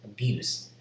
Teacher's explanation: you use it as a verb you will have voiced consonant at the end